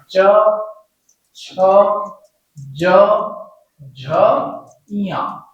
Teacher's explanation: इनके उच्चारण में जीभ तालु को स्पर्श करती है और मुख से वायु कुछ घर्षण के साथ बाहर आती है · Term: स्पर्श संघर्षी